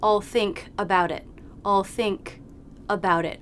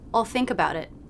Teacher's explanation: we lightly release the k but we want to do it right into the next word which begins with a vowel to connect so we don't want all think about it i'll think about